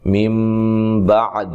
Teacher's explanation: نون ساکن کا اقلاب مع الغنہ ہے، نون کو میم سے بدل کر پڑھیں گے